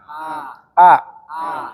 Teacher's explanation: Jangan lupa A itu ada pada tenggorokan paling bawah